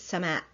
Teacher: In classical Arabic generally sky is Sama with a glottal stop at the end